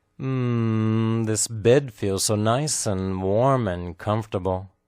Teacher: you can hear the emphasized word bed